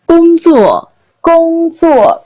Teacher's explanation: first and fourth tone again